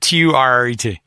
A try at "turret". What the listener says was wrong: You're adding an N.